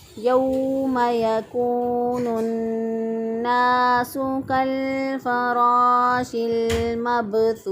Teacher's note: تا پیش واؤ واؤ مدہ ہے، واؤ ساکن سے پہلے والے حرف پر پیش، ایک الف کے برابر لمبا کریں گے اور سا وقف کی صورت میں ساکن ہو جائے گا، پھر ہم اس کو پڑھیں گے یوم یکون الناس کالفراش المبثوث۔